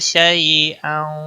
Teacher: شیء یالین ہے، نرمی کے ساتھ تھوڑا سا کھینچ کر ادا کریں گے